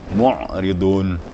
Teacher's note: Harus kedengaran ainnya di tengah tenggorokan.